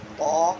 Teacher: تو تا اور وا، تا نکلے گا ادا ہوگا جہاں سے دال ادا ہوتا ہے، یعنی زبان کی نوک اور اوپر کے یعنی ثنایا اولیہ اوپر کے جو دو دانت ہیں ان کی جڑوں میں لگائی جائے گی، تب تا ادا ہوگا